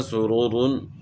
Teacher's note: اس طرح سرورون، تو یہاں دونوں را جو ہے نا، را کے اوپر پیش ہے، دوسری را کے اوپر دو پیش ہیں تو ان کو موٹا پڑھنا ہے، سین باریک ہوگا